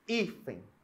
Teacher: Hífen é uma paroxítona, a sílaba tônica é a penúltima e ela termina em N, beleza?